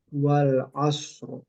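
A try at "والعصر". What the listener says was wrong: Nah, masih kurang tebal.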